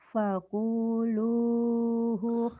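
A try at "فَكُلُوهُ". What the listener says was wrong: Fakulu, bukan Kalau kamu tadi bacanya fakulu, ku-nya pendek, yang panjang lu-nya. Fakulu gitu.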